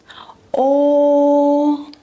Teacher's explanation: O, rounded mouth, neutral tongue.